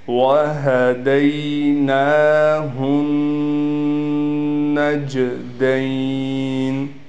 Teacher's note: نون پر کڑا زبر ہے، لہٰذا اس نون کو ہم 1 الف کے برابر کھینچیں گے۔ اس ہا کو اس نون سے ملا کر غنہ بھی کریں گے۔